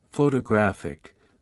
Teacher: in photographic the stress shifts to the third syllable